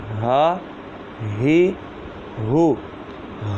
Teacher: ہا یہ حلق کے نیچے والے حصے سے ادا ہوتا ہے